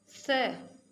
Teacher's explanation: लरिकार लरी, ल यानी ल वर्ण होता है वो, और जो संस्कृत में हमारे स्वरों में लरी आता है, लरी, त, थ, द, ध, न। ल, स यानी जो तीसरा स होता है हमारा दांतों से उच्चारित होता है